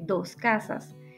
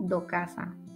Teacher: aspiración y pérdida de S implosiva y final seguida de K, P, T